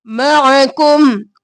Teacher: आइन गले के दरमियान से।